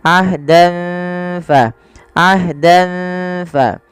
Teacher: Pada lafal dan ketemu fa, samarkan tanwinnya kepada huruf fa karena ia bacaan ikhfa yang dimana ada fathatain bertemu dengan huruf fa.